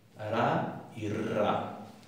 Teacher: se llaman vibrante simple y vibrante múltiple